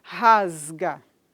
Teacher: um som que é vozeado que vai exercer influência nesse s e ele vai ser produzido como Z